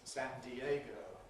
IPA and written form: ˌsændiˈeɪgəʊ (San Diego)